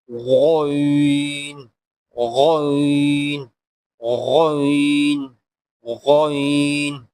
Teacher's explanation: ذرا موٹا کر کے گلے سے نکالیں گے